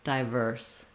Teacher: using your clear I diphthong, just keeping it fairly short so that verse is still stressed.